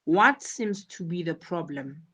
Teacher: you should notice the intonation falls at the end of the question.